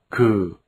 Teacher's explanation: The grapheme K. is a slightly aspirated velar sound. This sound is between the English G and K.